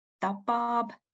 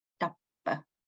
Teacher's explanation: in tapab, it's a short geminate, and in tappa, it's a long geminate.